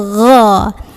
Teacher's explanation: Huruf ghain keluar dari tenggorokan paling atas. Bunyinya tidak seperti huruf G orang Indonesia, bukan go tapi gho.